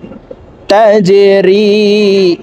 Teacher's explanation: জিম কলকলার হরফ নিচের দিকে ধাবিত করে ধাক্কা দিয়ে উচ্চারণ করব।